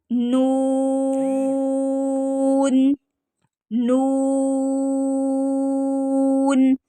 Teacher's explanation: मसूड़ों से और नून तीन दांतों के मसूड़ों से ठीक है तीन दांतों के मसूड़ों से कम से कम जुबान लगेगी तो तब नून अदा होगा · नाक के बांसा से नाक में इसकी आवाज लेकर जाया जाती है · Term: गुन्ना